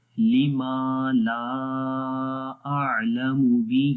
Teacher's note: ہی کو لمبا کریں گے، کھڑی زیر ہے اس کے نیچے ۔ تو با کے اوپر قلقلہ والا کلر ہے، · چھوٹی مد کو 2 سے 3 سیکنڈ لمبا کرتے ہیں اور ایک الف کے برابر یہ مد ہو گئی الف مدہ، · لیما ما کو لمبا کریں گے، الف ہے، الف سے پہلے زبر آ گئی ، لیما الف مدہ ہو گیا، لا کے اگین اوپر الف